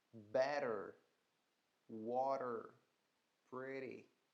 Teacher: O T vai ter esse sonzinho de R. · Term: flap T